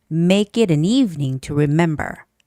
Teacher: the word it is a pronoun, and because it's a pronoun, you do not have to stress that word. You don't have to read it very strongly.